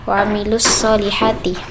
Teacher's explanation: Cara membaca alif lam syamsiyah yaitu huruf lam dimasukkan atau diidghamkan ke dalam huruf shad. Jadi dalam pengucapan bunyi huruf lam tidak tampak.